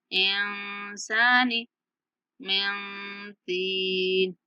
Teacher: नून की जो आवाज है उसको वाज़े करके नहीं पढ़ेंगे, छुपा कर अदा करेंगे। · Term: इख्फा